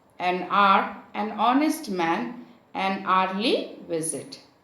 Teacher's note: An is used before a word beginning with H, which is not pronounced. H remains here silent, and therefore the beginning sound of the word becomes a vowel sound